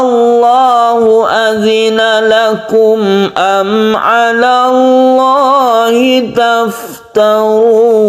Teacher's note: Tashdid juga disebut syiddah. Kita menekan huruf lam di sini sebagai tafkhim atau lafzul jalalah yang tebal.